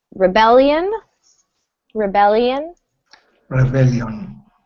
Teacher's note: So stress falls on that second syllable.